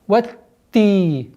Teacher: Уходим после огласовки фатха на та и удваиваем.